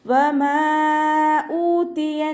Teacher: മീമിൻ്റെ കൂടെ മദ് വന്നു. മദ്ദക്ഷരത്തിന് ശേഷം അടുത്ത വേർഡിലായിട്ട് ഹംസ വന്നു. മദ് ജായിസ് മുൻഫസിൽ 2 4 കൗണ്ട് നീട്ടി പാരായണം ചെയ്യും.